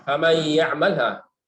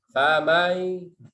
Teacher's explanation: Ini masuk ke ya dia. Udah ke ya dalam dengung.